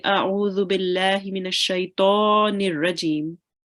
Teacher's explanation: make the ta a bit round, because we know that ta is a thick letter. So we should be saying A'udhu billahi minash shaitanir rajim.